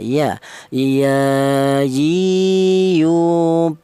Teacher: keluarnya huruf berasal dari tengah lidah ya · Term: huruf ya